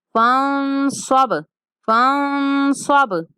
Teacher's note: با ساکن ہے تو ہلا کے پڑھیں گے، قلقلہ کرنا ہے ہم نے با کے اوپر